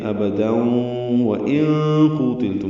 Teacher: نون ساکن کے بعد قاف آنے کی وجہ سے اخفا ہے، نون ساکن کی آواز چھپائیں گے · ملانے کی صورت میں ابدا و ان قوتلتم ہوگا، یعنی ادغام کریں گے